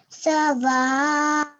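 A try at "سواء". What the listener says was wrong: Excellent, well done.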